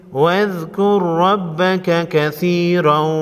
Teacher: را پر جزم ہے، موٹا پڑھیں گے، اور زبر بھی ہے، اس کو بھی موٹا پڑھیں گے